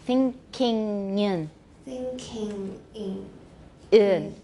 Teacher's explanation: So try to put the ng in front of the I because it's linked. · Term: linking